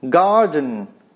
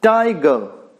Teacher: गार्डन। गार्डन means the first syllable is stressed and the next one is unstressed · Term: trochaic